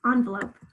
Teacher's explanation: you hear it in the second syllable or on the lobe both times i can hear in that second syllable i can hear the schwa sound